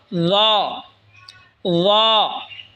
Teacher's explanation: ল জিহ্বার আগা সামনের ওপরের দুই দাঁতের আগার সঙ্গে লাগায় উচ্চারণ হবে ল